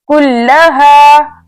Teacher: अब यहाँ दोबारा लाम मुशद्दद है, मजबूती और जमाव के साथ पढ़ा जाएगा। इसके अलावा 2 मरतबा पढ़ा जाएगा, एक मरतबा काफ से मिलाकर और दूसरी मरतबा अपनी हरकत के मुताबिक यानी जबर के साथ।